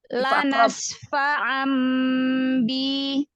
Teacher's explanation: Nun sukun. Nun sukun atau tanwin menjadi mim samar. Mim samar disertai gunnah, ditandai dengan huruf mim kecil ya. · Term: Iklab